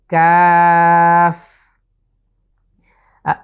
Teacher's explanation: শেষে কিন্তু কফ, শেষে ফা আছে, এজন্য আমরা ঠিক শেষের জায়গাটিতে এসে দাঁত দিয়ে আমরা নিচের ঠোঁটকে স্পর্শ করছি,